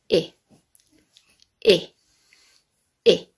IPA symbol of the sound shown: ɪ